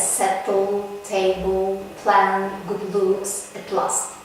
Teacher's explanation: such words as settle table plan good looks at last before the release is made by sudden lowering of the sides of the tongue and the air escapes along the sides of the tong with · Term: lateral plosion